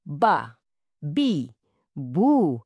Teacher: Dan pastikan bunyinya jelas. Ba bukan berangin atau tebal macam bah.